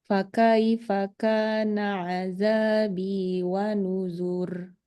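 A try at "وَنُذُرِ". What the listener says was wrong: Tebal. Wa nuzur. Zur. Zur.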